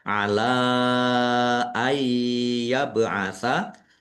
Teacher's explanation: Masuk dengan mendengung yaitu langsung masuk ke huruf ya. Nun sukunnya tidak dibaca dan mendengung ya ditahan biar tampak mendengungnya. · karena bertemu dengan huruf alif di kata yang berbeda maka menjadi mad jaiz munfasil. Dibaca panjang boleh lima boleh dua harakat. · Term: idgham bighunah